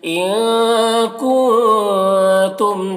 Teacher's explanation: کنتم کے نون میں بھی اخفا ہو رہا ہے اور میم میں اظہار شفوی ہو رہا ہے، اسے جلد پڑھنا۔